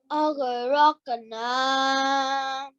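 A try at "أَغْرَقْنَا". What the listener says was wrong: Now, make sure you don't do a jerk after the gha. Aghraqna. Now, the noon, you made it 2 seconds longer again. What's the rule called? And Alif Madhya means a letter carrying a 2 seconds.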